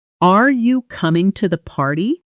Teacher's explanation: Notice the pitch climbing on party. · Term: rise